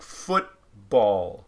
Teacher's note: have it happen in a two-syllable word like foot ball that there's more stress on that first syllable so you'd use a primary stress mark for foot ball and